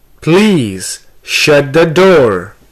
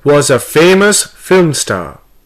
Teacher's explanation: here we have stressed on please shut and door